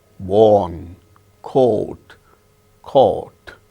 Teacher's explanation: So, in all these words we have the sound O, elongated O